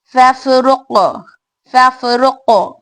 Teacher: फा में हवा एंड आवाज दो भी जारी, और कौफ में खलखला कुबरा यानी स्ट्रॉन्ग खलखला